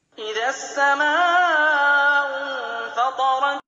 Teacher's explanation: Pada lafadz tersebut, tasydidnya harus ditekan dan sedikit tertahan ketika melafadzkannya. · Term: hukum tasydid